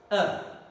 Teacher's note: Very short, not O rounded, but unrounded lips.